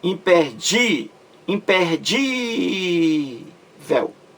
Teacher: acentuado graficamente aí porque é uma palavra paroxítona terminada em L é a sílaba mais forte a penúltima